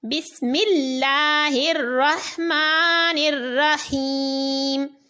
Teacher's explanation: لام کو باریک پڑھیں گے، کیونکہ اس لام سے پہلے زیر آ رہی ہے